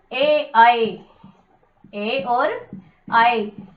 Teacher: ये दो वर्ण कंठ और तालु दोनों से मिलकर बोले जाते हैं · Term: कंठ तालु